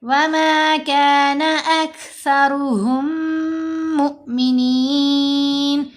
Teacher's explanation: میم ساکن کے بعد میم مشدد ہے تو یہاں ہم نے میم کا ادغام کیا، ہم غنہ بھی کیا